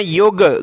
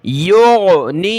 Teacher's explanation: غین نکالیں گلے سے، یہاں بھی گاف نہیں پڑھنا آپ نے